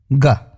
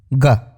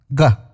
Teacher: जब आप ग का उच्चारण करते हैं तो आपकी जीभ का ऊपरी हिस्सा आपके तालु यानी पैलेट को बहुत ही हल्के से टच करता है, इसलिए ये कोमल तालव्य ध्वनि कहलाती है।